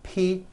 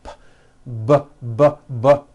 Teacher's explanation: You see that everything here stays the same. The only difference is my vocal cords are either vibrating or they're not vibrating. So we say the P sound and the B sound are paired consonants.